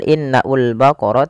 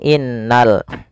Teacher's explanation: Pada alif lam di sini lamnya ditampakkan dengan jelas. Ini bukan innaul baqara tapi langsung ke lam. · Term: alif lam qamariyah